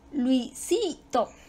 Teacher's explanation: Su sílaba tónica cae en la segunda.